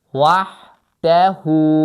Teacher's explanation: Baxın, hə boğazdadır. Mütləq ona diqqət edin.